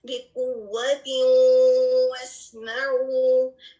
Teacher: جب ہم اس کو ادغام ناقص کو پروناؤنس کریں گے تو اس میں آپ کو نون غنہ کی آواز سنائی دے گی